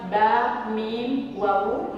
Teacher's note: ma baina syafatain, berarti bibir ketemu bibir